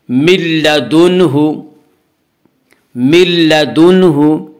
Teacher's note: نون ساکن کے بعد لام ہے اس لیے بغیر غنہ کے ملا کر پڑھیں گے، اسے ادغام بلا غنہ ادغام تام کہا جاتا ہے۔